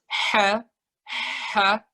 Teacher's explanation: Kalau ketebelan tandanya kita masih pakai tenggorokan paling bawah. H-nya itu kayak pengen bisik-bisik.